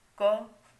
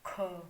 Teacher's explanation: जब मुख से कम हवा निकले तो अल्प है, और मुख से ज़्यादा हवा निकले तो महाप्राण है।